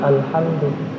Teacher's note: di sini kita lihat mim sukun ketemu dengan da. Ketemu dengan da da. Makanya dibaca izhar.